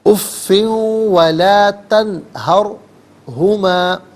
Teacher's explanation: اور لا تنہر میں نون ساکن، اس کے بعد 2 چشمی ہا حرف حلقی، تو نون ساکن پر غنّہ یا اخفا نہیں کریں گے، اظہار کے ساتھ پڑھیں گے. لا تنہر میں را ساکن ما قبل ہا پر زبر، را ساکن کو پر کر کے پڑھا جائے گا